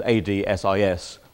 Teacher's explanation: In terms of sense, ad sis might have been rather better, but of course it's not going to fit in that position because AD-SIS, the two consonants are going to make the A long. Ad, naturally short, but of course long by position when followed by two consonants.